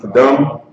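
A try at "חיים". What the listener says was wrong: Hayam. There's no ka in there.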